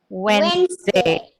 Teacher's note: So the d gets dropped and we say it as Wednesday.